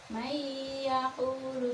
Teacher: Mayyaqulu dengan mendengung. Dibaca 1 alif setengah. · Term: idgham bi gunnah